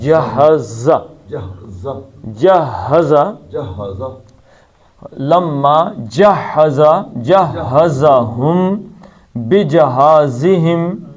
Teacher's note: جہزا زا جو ہے زے جو ہے اس میں ہمیشہ ایک سیٹی کی ہوتی ہے آواز